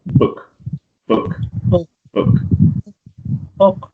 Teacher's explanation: your lips are not actually rounded that much it's more relaxed in that sense and it's very very short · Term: short vowel sound